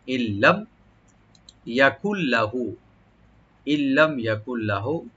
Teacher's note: নুন সাকিনের পর যেহেতু লাম আসছে এখানে আমরা নুনটাকে লামের সাথে মিলাবো। ইল্লাম এখানে এদগাম উইদাউট গুন্না হবে, গুন্না ছাড়া আমরা এদগাম করব।